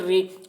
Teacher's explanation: را کے نیچے زیر ہے، زیر کو جلدی پڑھیں، تھوڑا بھی نہ کھینچیں ، معروف پڑھیں، مجہول آواز سے بچیں، ان مع العسر یس،